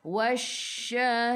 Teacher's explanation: Tafashi maksud dia hambur. Kena bunyikan shh.